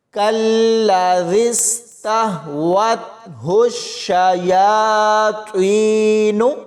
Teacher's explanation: ہا کو شین کے ساتھ ملاتے ہوئے سختی سے پڑھیں گے اور شین کی پوری آواز نکلنی چاہیے